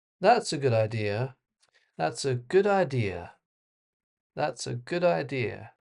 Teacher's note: it falls off at the end. and the intonation goes down which expresses certainty or a statement. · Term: falling intonation